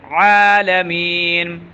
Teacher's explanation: عین کو صحیح ادا کرنا ہے گلے کے درمیان سے